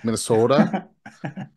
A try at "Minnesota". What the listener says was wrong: you're too quick. You really got to draw out that O like a native.